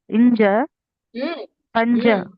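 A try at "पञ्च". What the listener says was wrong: Is it ja there? Pancha.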